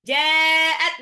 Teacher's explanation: Nah ini ja-nya harus panjang ini. Jadi ja, mat wajib mutasil, 6 harokat.